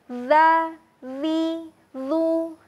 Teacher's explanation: huruf zal dilafadzkan dengan cara mengalirkan suara, bukan dengan menahannya atau memantulkannya ya, tapi dialirkan. Nah, untuk lidahnya, silakan sahabat disimpan lidahnya ke bagian ujung gigi.